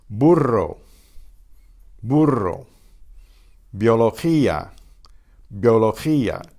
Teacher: When it does not occur between vowels, it sounds like the English B.